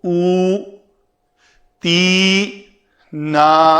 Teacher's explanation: اس مد کی مقدار ایک الف کے برابر ہوتی ہے، تو اس کو ہم الف پیش واو او تی نا بس، اس سے لمبا نہیں کر سکتے کسی بھی شکل میں. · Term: مد اصلی